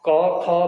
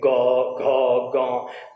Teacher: और जैसे हम बोलते हैं ग घ ग, क ख बोलेंगे तो क ख को बोलते समय यहाँ पर गूंज नहीं होती, लेकिन जैसे ही ग घ ग बोलेंगे तो यहाँ पर गूंज पैदा होती है।